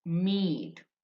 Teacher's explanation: This small i and colon which is which is said as e e it's a long vowel.